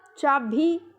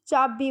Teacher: भय महाप्राण को अलप प्राण बना दिया।